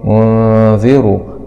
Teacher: راء ضمة مع تفخيم